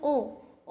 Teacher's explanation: ओ कंठ और ओष्ठ दो जगह हमारे क्रियाएं हो रही है ना